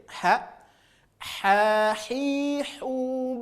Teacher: untuk huruf H keluar dari tengah-tengah tenggorokan